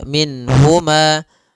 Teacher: Nun di sini harus jelas karena bertemu dengan huruf ha, maka tidak boleh ditahan.